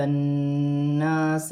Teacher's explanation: تا کو نون کے ساتھ ملا کر پڑھا جائے گا، نون مشدد ہے، نون مشدد میں غنہ کیا جائے گا، اور یہاں الف سے پہلے زبر ہے تو الف مدہ بھی بن رہا ہے۔